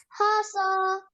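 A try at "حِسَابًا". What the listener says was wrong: No. Hasa or Hisa? Because at the end we have the sound Ba.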